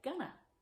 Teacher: I would have helped. And with going to, the to often becomes a. So we get gonna. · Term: schwa